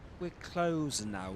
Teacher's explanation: He doesn't pronounce the final R, except of course there's a vowel right after it.